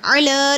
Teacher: مجعل عین نکالنا ہے، عل ٹھیک ہے، ال نہیں پڑھنا، عل پڑھنا ہے۔ عل لام پہ کھڑی زبر ایک الف کے برابر لمبا ہوگا